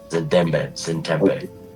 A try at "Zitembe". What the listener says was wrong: no, not Zin. Zit, like a zit. Zitembe.